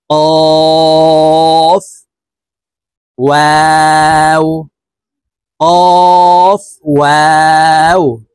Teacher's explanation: দেখুন, হামজাহ আলিফ, হামজাহ ওয়াও, হামজাহ ইয়া, ফা, কফ, কফ হরফ জিহ্বার গোড়া তার বরাবর উপরের তালুর সঙ্গে লাগাইয়া উচ্চারণ করব